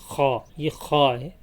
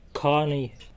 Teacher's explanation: یہ ہا سے تھوڑا سا الگ ہوگا، اس میں تھوڑی سی مشق کرنی ہوگی تو انشاءاللہ یہ آ جائے گا۔ خا یہ حلق کے اوپر والے حصے سے ادا ہوگا